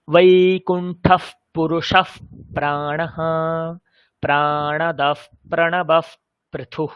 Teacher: এই যে বিসর্গের ফকারে পরিবর্তন, এই পরিবর্তনটাকে বলা হয় উপধ্মানীয়।